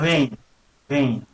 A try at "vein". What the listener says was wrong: That's better, yeah. Happens with your mouth is your teeth go just onto your bottom lip to say V. And then you vibrate the bottom lip a bit. Vein. I was almost like a German saying the W sound. That's what Germans actually say F normally for V, but W they often say as well. So, don't want to sound like a German.